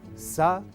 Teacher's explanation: Silabeado es u-sa-pu. La sílaba que lleva la vocal tónica es pu y por ser final, acento prosódico.